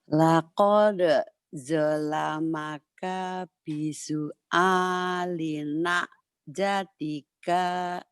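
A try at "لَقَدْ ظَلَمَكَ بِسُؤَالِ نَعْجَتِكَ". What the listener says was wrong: Kenapa K-nya panjang ya? Nah jatika ilah kan pendek ya bu ya. itu kan panjangnya itu karena ibu masih gredek, masih ragu, masih takut salah.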